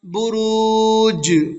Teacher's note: جیم حروف قلقلہ میں سے ہے اور جیم کے اوپر جزم ہے تو اس میں قلقلہ ہوگا۔